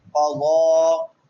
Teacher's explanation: قضا قاف بھی پر پڑا جائے گا اور ضاد بھی پر پڑا جائے گا، دونوں حروف مستعالیہ میں سے ہیں